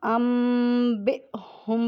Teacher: تو ہم نے نون ساکن کو میم سے بدلنا ہے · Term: اقلاب